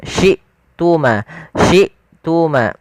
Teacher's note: Kemudian syuma pada lafal hamzah harus dijelaskan suara hamzahnya karena hamzah memiliki sifat syiddah dan jhar yang artinya tertahannya nafas dan tertahannya suara maka dia harus dijelaskan syi tuma.